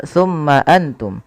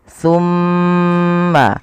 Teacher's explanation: Yang pertama, kita harus perhatikan pada lafal mim berharakat tasydid. Ketika mim itu berharakat tasydid, wajib ditahan suara gunnahnya.